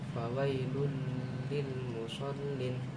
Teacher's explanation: hurufnya itu ada dua dan tidak dibaca dengung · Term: idhum bila guna